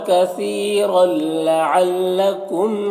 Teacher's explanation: کثیرن یہاں پر یا مدہ ہے، ایک الف کے برابر کھینچیں گے، را کے اوپر دو زبر ہے تو را کو پر پڑھیں گے، اور یہ تنوین کے بعد لام حروف یرملون میں سے، تو تنوین کو لام سے ملا کر بغیر غنہ کے پڑھیں گے، اس کو ادغام تام کہتے ہیں